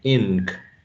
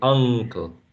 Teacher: here we have an n before a k, a velar consonant sound